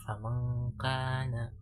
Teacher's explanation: bacaannya itu lebih samar dan dengungnya itu lebih ringan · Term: ikhfa ab'ad